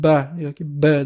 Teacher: pastki va tepalablarimiz bir-biriga tegib turadi. Yaʼni tiliz tilimiz esa qatnashmaydi.